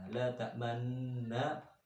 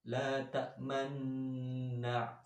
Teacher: La ta'manna ada dengungnya, terus dimoncongkan. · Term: bacaan ismam